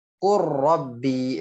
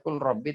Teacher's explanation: Nah, ini kalau dalam idgham namanya idgham kamil. Tidak ada terdengar huruf lam ketika meleburkannya.